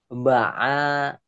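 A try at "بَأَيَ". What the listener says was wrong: Bahaya, nggak boleh panjang.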